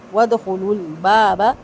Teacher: دال پہ قلقلہ ہوگا، لام کو لام سے ملانا ہے لیکن لام کو ہلانا نہیں ہے · وَدْخُلُوا بابا کا جو دوسرا والا با ہے چھوٹی حرکت والا، اس کو لمبا نہیں کریں گے